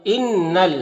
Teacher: ان نون مشدد ہے تو غنہ ہوگا، نون کی آواز کو ناک میں لے جا کر گنگنائیں گے، ایک الف کی مقدار